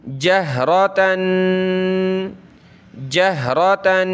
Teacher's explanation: तनवीन है, नाक में आवाज़ पैदा करें।